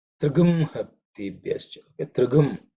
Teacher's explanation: wherever the anuswara is chanted in certain combinations, or letters which follow it, it morphs into gum